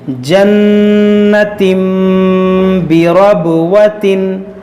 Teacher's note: یہاں پر دیکھیے نون مشدد ہے، اس میں غنہ کریں گے. یہاں تنوین کے بعد با ہے، اس میں اقلاب کا قاعدہ لگے گا، یعنی غنہ کریں گے. یہاں پر بھی یہاں با حروف قلقلہ ہے، اس میں قلقلہ کریں گے، را کو موٹا کریں گے.